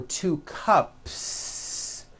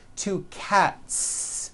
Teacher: there's no voicing at the end of that word the S remains unvoiced